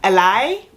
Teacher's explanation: I have started to accidentally drop R's, or not drop R's, but do an L sound. So sometimes when you hear Thai people speak, they make an L sound instead of an R sound.